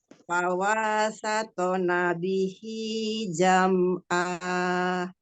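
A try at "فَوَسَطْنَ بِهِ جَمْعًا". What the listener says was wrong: Fawa. Wawunya tidak mat. Fawasatona bihi jam'a. Jam'a. Ain. Jam'a. Jam'a. Jangan diputus mimnya. Jam'a. Lagi mim sukun. Jam'a. Jam'a. Jangan jam'a. Jam'a. Jam'a.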